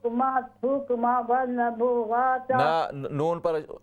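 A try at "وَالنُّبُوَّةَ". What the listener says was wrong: نون مشدد ہے، غنہ بھی کریں، اور نون پر زبر نہیں ہے، پیش ہے۔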